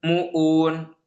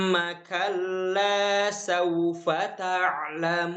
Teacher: Dia dibaca tanpa dengung dari hidung.